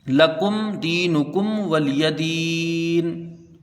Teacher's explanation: وقف الاسکان مد عارض۔ اب اس میں طول، توسط، قصر تینوں وجوہ کر سکتے ہیں۔